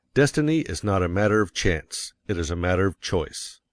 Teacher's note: And you will put some emphasis on not, else your hearers may think you are affirming that destiny is a matter of chance. By all means, you must emphasize chance, for it is one of the two big ideas in the statement. Another reason why chance takes emphasis is that it is contrasted with choice in the next sentence. · you will want to emphasize destiny, for it is the principal idea in your declaration. And you will put some emphasis on not, else your hearers may think you are affirming that destiny is a matter of chance.